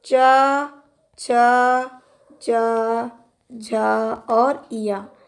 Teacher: आपके तालु से बोले जाने वाले च, छ, ज, झ और इया, तो ये व्यंजन तालु से बोले जाते हैं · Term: तालव्य